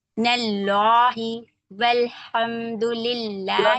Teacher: سبحان اللہ لام جلالہ موٹا پڑھیں گے. نون کو لام میں ملائیں گے کیونکہ مشدد ورڈ ہے